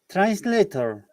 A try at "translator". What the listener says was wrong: No R sound in British English, remember. Okay, if you are pronouncing R, then it is an American English.